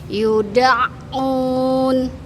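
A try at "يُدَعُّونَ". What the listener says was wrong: Sip, sudah Ibu. Barakallahu fiik.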